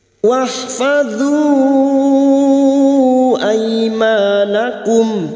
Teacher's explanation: Wahfadhu ada mat yang bertemu dengan hamzah di lain kalimat mat jaiz munfasil 5 harokat kita panjangkan